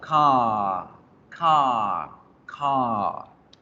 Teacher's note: Realmente el sonido de la R de ratón en inglés es casi invisible, casi que no existe.